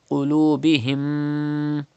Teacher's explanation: You have to keep the sound in your nose up to 2 harkat like this. Qulubihim. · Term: gunna